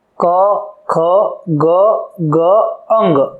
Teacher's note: એટલે આવા ધ્વનિને આપણે કહીશું, આવા વ્યંજનને કહીશું કંઠ્ય વ્યંજન, કે જેનું ઉચ્ચારણ ગળામાં હવા સાથે ઘર્ષણ થવાથી ઉત્પન્ન થાય છે